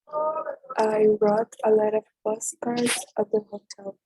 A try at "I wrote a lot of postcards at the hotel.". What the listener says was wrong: You don't pronounce I wrote, no, I wrote. The letter W you don't pronounce, right?